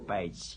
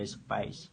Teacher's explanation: Ada page yang beraspirasi ada space yang tidak beraspirasi